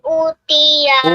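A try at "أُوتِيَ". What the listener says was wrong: Panjang. Utiya. Ulang lagi.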